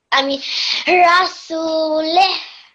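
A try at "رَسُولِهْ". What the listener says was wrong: Well done. I can see that you were trying and then you got it right. Excellent.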